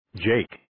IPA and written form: dʒeɪk (Jake)